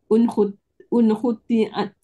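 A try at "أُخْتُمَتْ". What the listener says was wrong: Kenapa ada ain? Hurufnya tertukar tadi.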